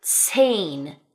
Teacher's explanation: we have 'z's that make a 'ts' sound right? A 'ts' sound as in the number zehn (10).